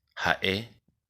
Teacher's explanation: Se pronuncia en forma aspirada como en el inglés y en el alemán. Nunca es muda en guaraní y tampoco se la representa como ge.